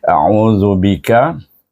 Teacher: Jadi lidah kita terkeluar, belakang hujung lidah kita ada gigi kacip atas tu. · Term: zal